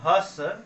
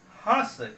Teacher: केवल नाक का सहारा लेंगे और इसका उच्चारण होगा हंस